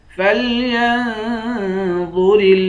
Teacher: یا کو نون سے ملا کر نون پر اخفا کریں گے، ضا کو موٹا پڑھیں گے